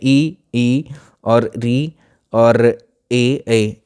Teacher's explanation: ये ऐसे स्वर होंगे जिसमें हम हमारी जो जीभ है, हमारी जीभ का जो अगला हिस्सा है जो दांतों से टकराता है, ठीक है, जिन स्वरों का उच्चारण हम अपनी जीभ के अगले हिस्से की सहायता से कर लेते हैं वो कहलाते हैं अग्र स्वर। जैसे ये जीभ है आपकी, तो ये इसका अगला हिस्सा है, ठीक है, जीभ का ये जो डॉटेड एरिया है, इससे आप जो बोलने की कोशिश करोगे, तो इसमें ई और री और ए, ये सब क्या है आपके अगला हिस्सा जीभ का बोलने में सहायता प्रदान करता है इनको।